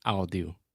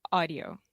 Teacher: that Au combination kind of just goes together and makes the ah sound and not ow